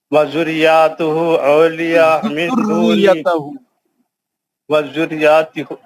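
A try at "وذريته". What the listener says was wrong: دو بار ذریتہ دو بار تشدید ہے نا وذریتہ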